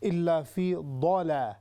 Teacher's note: اور آخری جو لفظ تھا الا فی ضالا، یہ دالا، یہ دال نہیں ہوگا بلکہ ضاد ہوگی، تو اس لیے تھوڑا سا اس کو جو ہے اور زیادہ ہیوی کر دیں